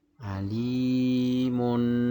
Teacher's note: Cara bacanya suara nun itu mati, dibaca jelas. Alimun. Jadi tanwin mati bertemu dengan huruf ha. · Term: ithar